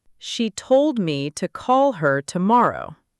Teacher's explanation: She, me, to, her, those went by quietly.